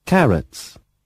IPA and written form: ˈkærəts (carrots)